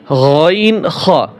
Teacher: তিন নাম্বার মাখরাজ হলকের শেষ হইতে